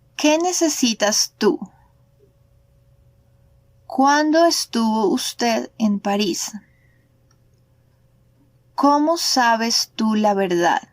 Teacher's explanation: it is no longer necessary to raise the pitch of the voice at the end of the phrase. Here, the question word already let us know that it is an interrogative sentence.